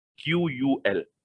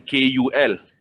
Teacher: Makhraj huruf qaf di dalam. Kaf di hadapan sedikit. Tapi qaf, dia adalah lebih kepada konsonan Q.